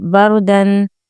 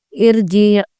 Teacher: جیسا بردن میں رو کو پر پڑھیں گے، ارجی میں رو ساکنہ کو باریک پڑھیں گے